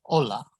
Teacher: lache is mula the h is mute so examples are ola the h is there in the spelling but there's no pronunciation of it